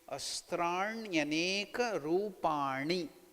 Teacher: The tongue should twist upwards, retroflex, it is called murdhanya.